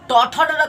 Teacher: ट ठ ड का उच्चारण स्थान मूर्धा से